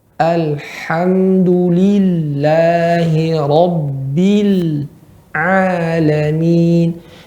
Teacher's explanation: hati-hati huruf lam tidak boleh memantul. Dan lam suaranya mengalir sedikit.